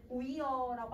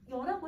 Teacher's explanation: 이하고 어가 만나면 여가 되는 거야. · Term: 축약